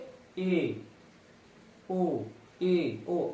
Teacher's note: अर्ध संवृत, मुख्य द्वार आधा बंद रहता है। अर्ध संवृत यानी बंद, आधा, मुख्य द्वार आधा बंद रहता है।